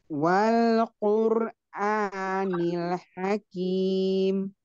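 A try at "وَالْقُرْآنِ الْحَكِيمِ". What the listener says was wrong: Ada hamasnya hakim. Iya, hamas kak. Kim mundur lagi, kayaknya mundur ya. Kurang mundur kayaknya.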